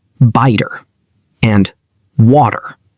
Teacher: relaxes his tongue. The T sound changes into a quick, soft D sound. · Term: flap T